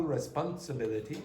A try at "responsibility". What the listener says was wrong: No, you're trying to put in an extra syllable there. Responsibility.